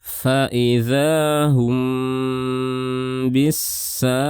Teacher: Ini disebut dengan ikhfa syafawi. Jadi di sini kita berikan gunnah, gunnahnya panjang.